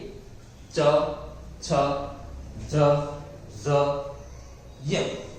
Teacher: બીજો છે તાલવ્ય તાલવ્ય એટલે કે આપણું તાળવું જીભનું ટોચવું છે જીભનું ટેરવું છે એ તમારા મોહના ઉપરના ભાગમાં તાળવે ટકરાશે